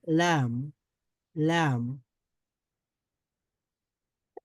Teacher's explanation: এটার যে কোনো একটা সাইড লাগবে, একটা কিনারা লাগবে, একটা অংশ লাগবে। পুরো জিহ্বার অগ্রভাগ পুরোটাই লাগবে না। লাম উচ্চারণ করার সময় একটু অংশ লাগবে। · এই যে জিহ্বার অগ্রভাগের আহ, একটা কর্নার, একটা সাইড, মানে জিহ্বার অগ্র সাইডটা লাগাতে পারেন, জিহ্বার অগ্রভাগটা লাগাতে পারেন উপরের দাঁতের গোড়ার সঙ্গে, তাহলে লাম উচ্চারিত হবে